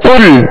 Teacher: قل قاف لام پیش قل. قل پیش کی ادائیگی میں ہونٹوں کو گول کرنا ہے